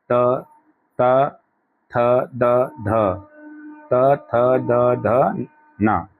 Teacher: त बोलिए, जीभ कहाँ टकराएगी, दांतों से